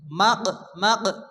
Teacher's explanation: কফ সাকিন কফ যেহেতু কলকলার অক্ষর হালকা ধাক্কা দিয়ে পড়তে হবে